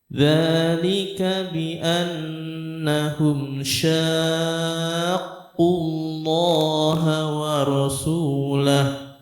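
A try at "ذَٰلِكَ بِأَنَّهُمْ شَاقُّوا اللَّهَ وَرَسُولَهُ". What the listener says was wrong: Tahannya kurang panjang. Syaq.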